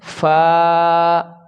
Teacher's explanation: اوپر کے دانتوں کے کنارے اور نچلے ہونٹ کے تر حصہ سے اس کو ادا کیا جاتا ہے